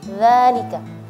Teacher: bukan za tapi dza lidahnya dikeluarin sedikit ya